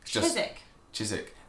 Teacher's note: You kind of miss out the W